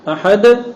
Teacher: احد کی دال کے وقت بھی زبان اتنی ہی مضبوطی سے لگی جو الحمد میں لگی تھی، لیکن چونکہ وقت نہیں تھا تو آپ نے اس کو اچانک الگ کیا. اچانک الگ کرنے کی وجہ سے لوٹتی ہوئی آواز آتی